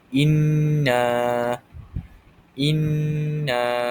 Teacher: Dan cara bacaannya dipanjangkan sepanjang dua harakat. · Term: mad asli